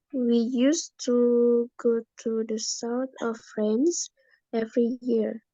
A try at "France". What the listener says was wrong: Frank ya. Bukan Frank. Coba kita dengerin lagi. Ya, France.